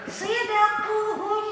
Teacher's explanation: Sidakuhum, maka dalnya menjadi kolkolah, memantul. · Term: kolkolah sugro